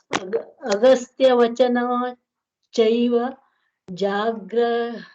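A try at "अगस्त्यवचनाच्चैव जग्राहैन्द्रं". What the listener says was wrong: See, Jagra. See, Dirgha is there on the ga. So, Jagra, Hai, Ndra. See, one thing about Devanagari Lipi, there is no far-field lookup you need to pronounce. If you are slow enough, every letter speaks to you the correct pronunciation. So, Jagra, Haindra, Haindram.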